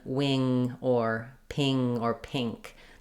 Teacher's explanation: that NG has the the biggest change to the vowel before it